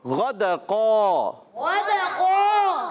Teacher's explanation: غین موٹا کریں گے، غین حروف مستعلیہ میں سے